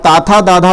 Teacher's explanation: ताथा दाधा जो है ये दंत से बोले जाते हैं